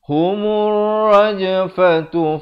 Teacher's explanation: That humur, mim baris depan terus naik di atas ra di sini ada lam syamsiah. Lamnya tidak dibunyikan.